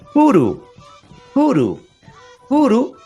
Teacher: es una oclusiva aspirada oclusiva porque hay cierta oclusión no oclusión y hay un sopero · es la letra P, pero con un soplido.